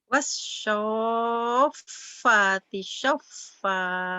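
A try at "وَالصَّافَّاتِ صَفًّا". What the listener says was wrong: Bagus, fa-nya panjangin. Wassofati sofa. Fa-nya panjang juga.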